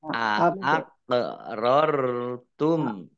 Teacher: kof sukun, bacaan kolkolah, dibaca memantul